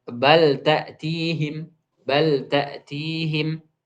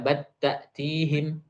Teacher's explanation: lam pada bal itu tidak diidghamkan, melainkan diizharkan.